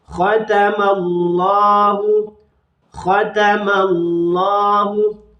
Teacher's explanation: lafzul jalalahnya ini dibaca tafkhim